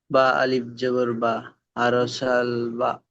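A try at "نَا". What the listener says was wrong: না, ওটা বায়ের নক্তা নিচে থাকে, ওটা উপরে নক্তা আছে, নুন পড়তে হবে, নুন আলিফ জাবার না।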